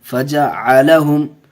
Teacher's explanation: यहाँ मीम को ज़ाहिर करके पढ़ेंगे, गुन्ना नहीं होगा।